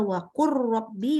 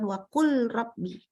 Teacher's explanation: Ada lam ketemu dengan ro, itu maka lamnya hilang ya. Lamnya bacanya hilang langsung ke ro.